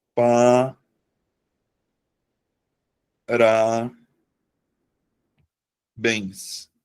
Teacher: eu vou acentuar porque a sílaba tônica tá na última sílaba da palavra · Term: oxítona